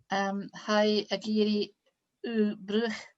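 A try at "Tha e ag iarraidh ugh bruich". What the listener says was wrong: Ha egiri u pruch. The B sounds like a P, okay? So ha egiri u pruch. And the ch at the end, u pruch.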